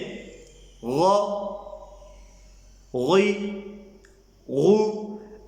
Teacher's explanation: غین اور خا متحرک کو منہ بھر کے پڑھا جائے گا